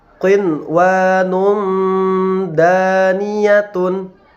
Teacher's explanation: Di sini terdapat tanwin bertemu dengan huruf dal, ya. Maka cara membacanya adalah menyamarkan daripada bunyi tanwin tersebut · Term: ikhfa